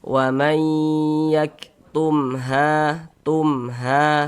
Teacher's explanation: Jadi kalau ada huruf mim sukun bertemu dengan huruf apapun itu kecuali mim dan ba, maka hukumnya adalah izhar syafawi. Karena dia izhar maka dibaca jelas tidak berdengung. Baca pendek saja.